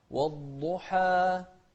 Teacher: شوف الضاد هني مفخمة لكن بعدها حاء وبعد الحاء ألف، فننتبه للترقيق فيها. والضحى ما نقول والضحى، لا، والضحى والليل إذا سجى.